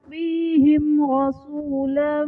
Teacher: میم ساکن کے بعد حرف با اور میم کے علاوہ را آ رہا ہے تو یہاں پر اظہار شفوی کا قاعدہ ہوگا، یعنی میم ساکن میں ہم غنہ نہیں کریں گے